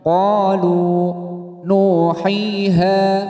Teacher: Panjangnya satu alif atau dua harokat. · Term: mat tabi'i